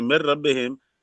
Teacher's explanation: ہاں را کی مثال جیسے من ربہم جو اصل میں من ربہم تھا، اب یہاں نون ساکن حروف یرملون کے حرف لام سے پہلے ہے تو نون کو را کر دیا اور را کو را میں بغیر غنہ کے ادغام کر دیا تو من ربہم سے من ربہم ہو گیا۔